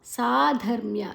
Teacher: ಸಾ ದೀರ್ಘಾಕ್ಷರ. ಧ ಮಹಾಪ್ರಾಣ ಅರ್ಕರ ಒತ್ತು ಮ್ಯಾದ ನಂತರ ಉಂಟು, ಅದನ್ನು ಹಿಂದುಗಡೆ ತಗೊಳ್ಳುವ.